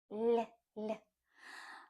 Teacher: If you wanna make this letter sound soft, you put the tip of your tongue on the upper jaw, on that bump, but you flatten it. So in comparison with the English L, our L is flatter. L. So try to make the tip of your tongue flatter.